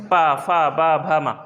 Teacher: ओठ चिपक रहे हैं आपस में, दोनों ओठ स्पर्श कर रहे हैं, तो इनको बोल देंगे ओष्ठ या ओट।